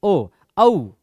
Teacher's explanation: तो औ में क्या है, आ है, आ भी है और ऊ भी है, तो कंठ और ओष्ठ